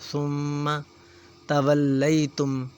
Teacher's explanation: میم مشدد ہے، غنہ کریں گے